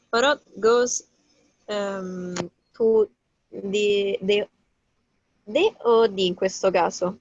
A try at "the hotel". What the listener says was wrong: In questo caso è the perché dici hotel, l'H la pronunci.